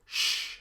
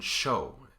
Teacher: If you move your tongue just a little bit back, instead of getting S, you get sh as in show